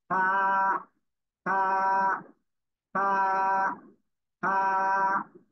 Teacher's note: নিচের ঠোঁটের পেট, সামনে উপরের দুই দাঁতের আগার সাথে লাগিয়ে হালকা বাতাস বের করে উচ্চারণ করতে হবে। এই যে নিচের ঠোঁটের পেট, সামনের উপরের দুই দাঁতের আগা, আগার সঙ্গে লাগিয়ে, নিচের ঠোঁটের পেট সামনের উপরের এই যে দুই দাঁত, দুই দাঁতের আগা নিচের ঠোঁটের পেটের সাথে লাগাবেন, লাগিয়ে হালকা বাতাস বের করে উচ্চারণ করবেন।